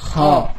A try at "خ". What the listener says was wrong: Ini masih tipis. Kho.